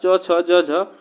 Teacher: यह जो हमारा च छ ज झ इसका जो उच्चारण स्थान होता है वो हमारा किससे होता है? तालव्य से होता है, ठीक ना। तो यह तालव्य से होता है।